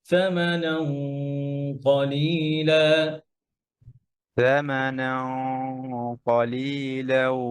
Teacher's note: গুণনাটা মোটা হবে এবং গুণনাটা লেগে যাবে কফের সাথে